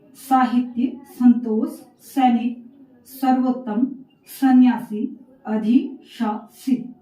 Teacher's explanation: स का उच्चारण जब आप करेंगे तो उसमें एक हल्की सी सीटी वाली ध्वनि आपको सुनाई देगी। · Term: दंत श